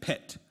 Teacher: in pit you feel a much stronger puff of air against your hand